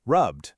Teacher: You hold the B and release the D, rubbed. See how much smoother that is?